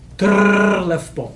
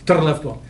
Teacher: the double R is a very strong trill